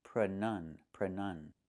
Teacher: We see the letter U there between the ends, right? That's a short uh sound like cup and up.